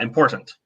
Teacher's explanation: And some people, like it's like a schwa, important. Like you almost don't even pronounce the last syllable or the last vowel, right? And again, that none of those are wrong.